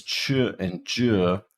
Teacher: when you start the sound it begins as a stop and then it releases slowly into a frickative so that's what the plus delayed release feature is capturing everything